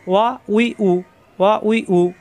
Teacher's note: প্রত্যেকবার দুই ঠোঁট থেকে উচ্চারণ হবে, কিন্তু ঠোঁট ফাঁকা থাকবে। ওয়া উই উ, ওয়া উই উ, জবর আসলে ওয়া, জের আসলে উই, পেশ আসলে উ। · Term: ওয়াও